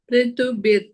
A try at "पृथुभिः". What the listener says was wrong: पृथु, th महाप्राणा, ध महाप्राणा. Bhir, not bir. Bhir, bhir.